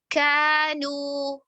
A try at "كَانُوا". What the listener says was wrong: نو واو مدہ کی آواز ناک میں جا رہی ہے.